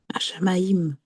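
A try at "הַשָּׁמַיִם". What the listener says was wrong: Alors, ici, tu vois qu'il y a un point. Alors, quand il y a le point, ça veut dire qu'il est doublé. Il faut dire H, Shamaïm. Ouais, parce que ça veut dire que la lettre, elle est doublée. Il y a deux chines.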